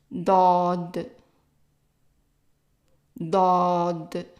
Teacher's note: It's a D, but pronounced in the back of the throat.